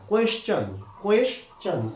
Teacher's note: আবার দেখো যদি কোনো শব্দে এসের পরে টি থাকে, যদি কোনো শব্দে এসের পরে টি থাকে তো ঠিক এসের পরে এখানে টি আছে এবং পিছনে আই ও এন আছে, তাহলে টি এর উচ্চারণটি আর তাহলে শ হবে না, টও হবে না, তাহলে চ হয়ে যাবে। ঠিক এসের পরে টি এবং পিছনে কি আছে আই ও দেওয়া আছে, তাই এখানে কি হয়ে যাবে টিতে চ হয়ে যাবে। তাই এটা এটা কোয়েশ্চেন না, কোয়েশ্চন, কোয়েশ্চন টিতে চ, যেমন সাজেশন, ডাইজেশন, এই সমস্ত শব্দের মধ্যে কি হচ্ছে টিতে এখানে চ হয়ে যাচ্ছে।